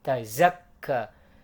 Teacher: Zai, huruf zai. Huruf zai itu ujung lidah keluar di antara gigi atas dan gigi bawah, dan desisnya itu terasa banget.